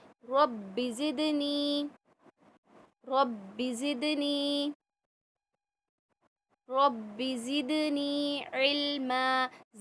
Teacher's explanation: रब्बी के बा को खींचना नहीं है